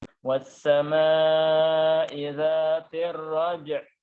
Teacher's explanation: jim sukun ditambah dengan ain yang juga kita sukunkan karena kita berhenti menjadi raj'. Ya, ada ain yang sukun juga.